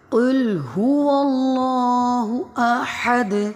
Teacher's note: قاف موٹا پڑھا جائے گا، لام باریک پڑھیں گے۔ اللہ کا جو اسم ہے اس میں جلالت موٹا پڑھا جائے گا۔